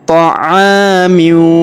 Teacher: Ala ta'amiu. Perhatikan huruf a kita panjangkan 2 harokat karena terdapat alif di depannya.